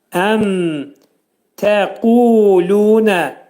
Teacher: Mim hərfinin burada məxrəci izhar olur, ağız yumulur.